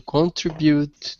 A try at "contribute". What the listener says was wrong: Instead of contribute, actually this one, the stress is in the middle, so we contribute. Contribute, yeah. Contribute.